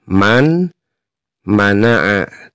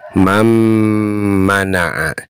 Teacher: Mam ada suara yang masuk ke rongga hidung. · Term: idgham bigunnah